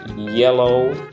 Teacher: bagian tengah lidah itu terangkat ke bagian langit-langit keras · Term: palatal